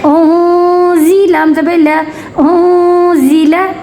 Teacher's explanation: नून साकिन पे इख्फा का रूल, ठीक है, इख्फा का कायदा अप्लाई करेंगे, यानी नून की आवाज़ को छुपा कर गुन्ना करेंगे।